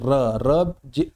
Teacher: र भी जब हम बोलते हैं तो हमारी हल्की से जो जीवा है वो मसूड़े में टकराती है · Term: वतश्चर्य व्यंजन